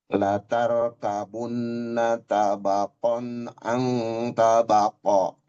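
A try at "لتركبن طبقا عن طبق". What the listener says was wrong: Itu taknya sedikit tipis tapi ditebalin lagi. La tarkabunna to. Tebal. Tabaqan an to. To lagi. To tebal lagi. An tabaqo.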